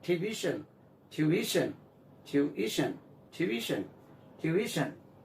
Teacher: Stress lies on the second syllable.